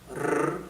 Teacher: your tongue is not rolled backwards, okay? It remains forward and slightly touching the front of your upper palate, okay? And it's a sound of the vibration of the tongue near your front teeth, okay? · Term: rolling R sound